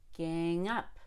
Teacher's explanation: i stress both gang and up because it's an idiom or a phrasal verb